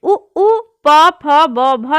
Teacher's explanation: दोनों होठ से बोले जाते हैं, इसलिए इन्हें ओष्ठ वर्ण कहा जाता है।